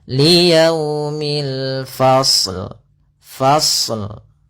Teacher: hati-hati jangan memantulkan shadnya